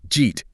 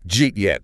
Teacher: >> The lazy uh at the end of didja bumps into the strong stressed E sound in eat. Because the E carries the stress, the weak uh sound gets swallowed entirely. Didja eat? Physically links together and reduces to just one explosive syllable, jeet.